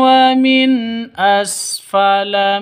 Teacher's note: mim mati bertemu dengan wawu jelas terang ya jelas terang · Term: izhar syafawi